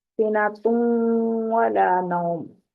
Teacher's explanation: ہونٹوں کو مکمل گول کرتے ہوئے نون کی ادھوری سی آواز کو ناک کی جڑ سے نکالتے ہوئے غنہ کی ادائیگی کی جاتی ہے